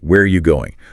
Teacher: The stress is on where and going, and that word are just becomes tiny. It almost disappears.